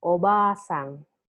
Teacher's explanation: if you are going to make it into a long vowel you add another character ah obasang you prolong it a little